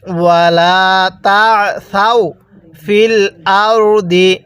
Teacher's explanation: আইনটা পড়ার সময় গলার মধ্যে হালকা চাপ দিয়ে পড়লে আইনটা সহি শুদ্ধ উচ্চারণ হয়